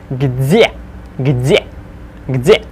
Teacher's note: Remember the softening of D into Z.